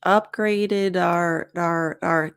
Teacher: and notice here we have connected speech upgraded our our our the D sound connects to the O